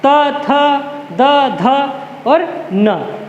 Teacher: जब हम इनका उच्चारण करते हैं तो जिह्वा हमारी जाके दांतों को स्पर्श करती है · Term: दंत्य